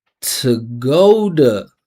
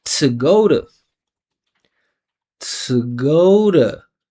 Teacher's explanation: because this T is unstressed, surrounded by vibrating vowels, I'm turning it into a flap T